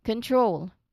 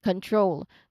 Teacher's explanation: it's the T sound leading immediately into the R sound. So ter. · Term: TR sound